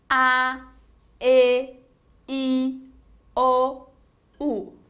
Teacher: nenhum órgão da boca interrompeu a passagem do ar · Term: vogais